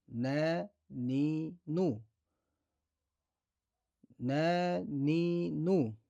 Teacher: Нун әріпі жіңішке әріптердің қатарына жатады. Нун әріпінің махражы тілдің ұшы мен алдыңғы екі жоғарғы тістің ішкі жағынан шығады.